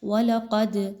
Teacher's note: قاف جو ہے وہ موٹا حرف، اس کو پر کر کے پڑھیں گے